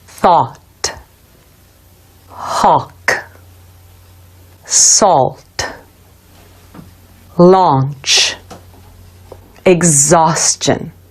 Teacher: is a back vowel sound where the lips are rounded the tip of the tongue is relaxed and touching behind the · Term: ah sound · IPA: /ɔ/